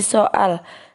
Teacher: Dalam kata soal itu ada jeda di antara huruf O dan A. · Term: glotalisasi